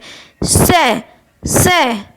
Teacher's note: संघर्षी व्यंजन भी कहते हैं जिसमें बोलने में क्या होता है गर्म हवा निकलती है